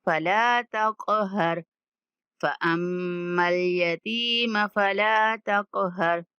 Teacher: قاف پر کلکلا کرنا ہے